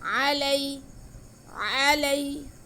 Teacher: یا ساکن سے پہلے زبر ہے تو یہ یا لین ہے، اس لیے ہم اسے بالکل نہیں کھینچیں گے.